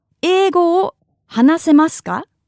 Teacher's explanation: That's because the sentence ends in a ka and the intonation is raised